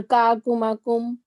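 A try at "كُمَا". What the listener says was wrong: का को लंबा नहीं करना क्योंकि जबर है, अलिफ नहीं है।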